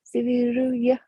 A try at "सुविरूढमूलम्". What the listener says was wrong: give a D. Yeah, D. Try to bring the D sound there.